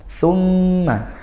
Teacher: huruf tha yaitu di ujung lidah bertemu ujung gigi seri atas dan desis.